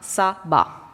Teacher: Deuxième chose sur les voyelles, les diphtongues sont absentes de la prononciation, c'est-à-dire que by devient ba, sober devient sa ba